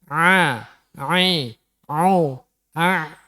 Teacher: Jadi nek maca ain ojo a tapi harus benar-benar dari tenggorokan a. Ya, tengah tenggorokan ya.